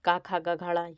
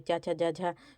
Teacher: तो तालव्य जो व्यंजन हैं आपके, देखिए, तालव्य व्यंजन जो होते हैं जो तालु से बोले जाते हैं, तो का खा गा घाड़ा ये आपके कंठ से बोले जाते हैं। चा छा जा झा तो ये तालु से बोले जाते हैं।